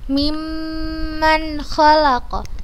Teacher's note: Imma kita bacanya dengan tempo gunnah yang dipanjangkan.